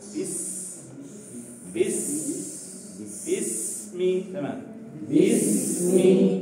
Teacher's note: ngalirnya itu sempurna sebagaimana sifat rikhwahnya huruf sinnya harus sempurna